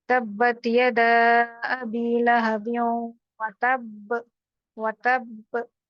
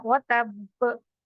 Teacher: दोनों होंठ बंद करके झटके से खोल देना, तो स्ट्रॉन्ग कलकला होता है